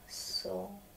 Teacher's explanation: On a une tendance de ne pas prononcer L dans ce mot quand il a trois consonnes comme ça ensemble.